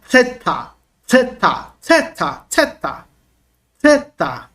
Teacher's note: theta é a língua entre os dentes, tá bom? Soprando. Porque ela é uma dental, tá? Língua dental, e também ela é uma aspirada.